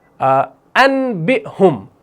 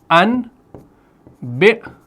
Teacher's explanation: اور جب اقلاب ہوگا تو اس نون ساکن کو لکھا جائے گا لیکن پڑھنے میں میم، یعنی جب ہم اس کو پڑھیں گے تو میم پڑھیں گے